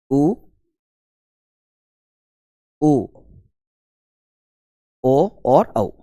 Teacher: 4 ही स्वर ऐसे हैं जिनके उच्चारण में अपने ओष्ठ जो है वो गोल हो जाते हैं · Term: वृत्तमुखी स्वर